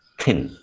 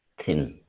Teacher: when you touch your throat and pronounce there is no vibration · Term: voiceless